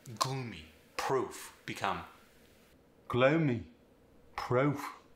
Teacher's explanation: The O sound also gets an A in front of it.